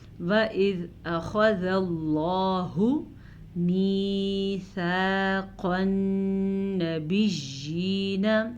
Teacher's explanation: لفظ اللہ کو پر پڑھیں گے اور زال کو نرمی سے پڑھیں گے